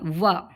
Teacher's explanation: व वर्ड का उच्चारण स्थान आपका दंतोष्ठ है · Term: दंतोष्ठ्य व